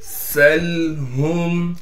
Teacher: सीन को लाम से मिलाएंगे। सीन में सीटी अदा करेंगे इसलिए कि लाम साकिन है।